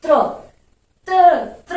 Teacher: त्र, र की ध्वनि निकल रही है। तो आप रटो मत, समझो इसको, त, र और अ।